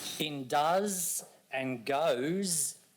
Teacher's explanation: In does and goes, the S actually represents the Z sound.